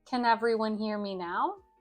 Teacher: The intonation goes up because it's a question.